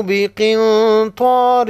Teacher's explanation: بقن نون ساکن پر اخفاء حقیقی ہوگا